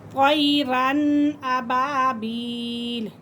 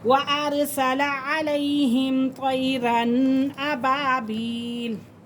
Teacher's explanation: تنوین کے فوراً بعد حمزہ آ رہا ہے، تو یہاں پہ ہم غنہ نہیں کریں گے۔ طیراً ابابیل، ناک میں آواز بالکل قطن نہیں لے کے جائیں گے۔